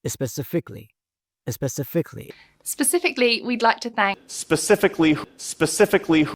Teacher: እዚህ ጋር ያለው ስህተት አንድ ፊደል ብቻ ነው ካ የምትለዋን አራተኛዋን ኦኬ ወደ ሳድስ ድምፅ ወሰዷት